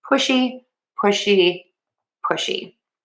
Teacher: Um, you want to make sure that when you're saying pushy that you use that sh and you round those lips